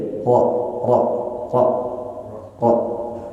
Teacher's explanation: untuk huruf ro jangan ditampakkan getarnya jadi ro ro ro ro jadi sekedar saja menggetarkannya di mana · Tapi untuk huruf ro jangan ditampakkan getarnya.